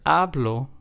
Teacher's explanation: In the word hablo, we are stressing the second to last syllable. So, in this word, since there's only two syllables, this would be the first syllable. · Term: word stress